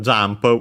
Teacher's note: we have already seen in this very series, accented just like in English, so on the ja, on the first syllable, more also, with the n actually pronounced as M because of the following P